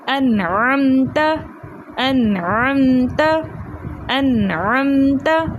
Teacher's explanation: اور دوسرا, نون ساکن کے بعد حروف ہلکی میں سے عین آ رہا ہے, تو اس لیے ہم یہاں پر نون کو اس کے مخرج اور صفات کے ساتھ خوب ظاہر کر کے پڑھیں گے, کیونکہ اظہار ہلکی کا قاعدہ ہو رہا ہے.